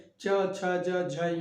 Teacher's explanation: तालव्य अर्थात तालु से जिसका उच्चारण होता है, जिह्वा के तालु भाग से, जिह्वा के अग्र भाग से, तो वह तालव्य होता है।